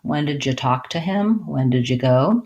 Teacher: another reduction that we will do sometimes is the you will become a ya